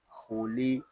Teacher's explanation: مستعلیہ میں سے ہے، اس کو پوری یعنی موٹا پڑھیں گے اور لام کو ہم باریک پڑھیں گے